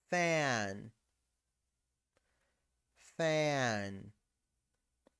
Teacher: En lugar de sonar fan, fan, fan, fan. Es una A amplia. Abres la boca.